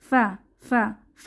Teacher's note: ফায়ের উচ্চারণের উপরের দাঁতে নিচের ঠোঁটে বাতাস চালু হবে